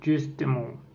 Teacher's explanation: Ce phonème E est appelé E caduc, E sur, E muet ou E instable. C'est une voyelle antérieure arrondie et orale. Cette voyelle peut être mi-fermée, E, ou mi-ouverte, E.